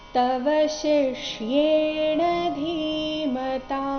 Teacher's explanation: ಇಲ್ಲಿ ಧಿ ಮಹಾಪ್ರಾಣ ದೀರ್ಘ ಬರಬೇಕು ಕೊನೆಗೆ ತ ದೀರ್ಘ ಬರಬೇಕು